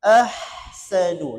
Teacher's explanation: Kalau huruf ha tu itu huruf rakhawah. Ahsanu lepas habis.